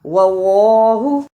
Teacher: جس اللہ سے پہلے زبر یا پیش ہو اسے موٹا یعنی پر پڑھتے ہیں